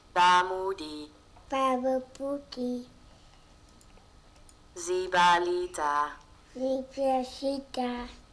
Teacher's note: the second part had this kind of falling da da da da da falling prosody. Also, it had only CV, CV, CV syllables, consonant, vowel, consonant, vowel, consonant, vowel, which is a kind of syllable structure which is shared by all languages in the world.